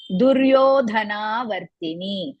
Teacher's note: Duryo, Yo is Dirga, Dhana, Dha again Mahaprana, Na, Dirga, Vartini, Vartini, Ti, all are Hrisva, Ni is Dirga.